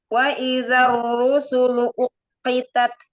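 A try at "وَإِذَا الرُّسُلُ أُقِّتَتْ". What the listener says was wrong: Wow, fathahnya selesaikan dulu, jangan terburu-buru ya. Maka seperti Anda bilang tadi, ketika mengucapkan huruf waw itu kondisi mulut kita monyong dulu, baru harokatnya keluar, baik itu fathah, kasroh, dhammah.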